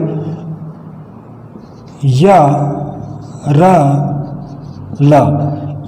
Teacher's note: तो या, र, ल ये अघोष वर्ण है। यह है जो तालव्य है, रा है मूर्धन्य है और ला है जो दंत्य है। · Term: अंतस्थ व्यंजन